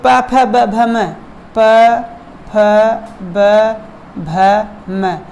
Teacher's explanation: जब आप संधि पढ़ेंगे, उसमें वर्ण पढ़ेंगे, तब इसमें ये समझ में प वर्ण, फ वर्ण, ब भ, ये म, ये सभी क्या है, इनका उच्चारण स्थान कहाँ से होता है, ओठ से। आप जब बोलेंगे प, आपका ओठ क्या है, दोनों ओठ आपके प बोलने से चिपक जाएंगे, तो इसीलिए इसका उच्चारण स्थान क्या है, प है, ओष्ठ है।